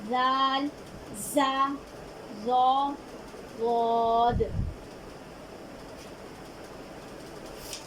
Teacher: زا کو نرمی سے باریک، زا کو سختی سے باریک، ضا کو نرمی سے موٹا اور غاد کو مضبوطی سے موٹا ادا کریں گے